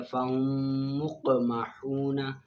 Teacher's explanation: میم ساکن کے بعد دوسری میم آ جائے تو میم ساکن میں ادغام شفوی مال غنہ ہوگا